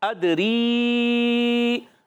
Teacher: ادری حمزہ کو دال سے ملانا ہے دال ساکن ہے قلقلہ ہوگا خوب آواز لوٹے گی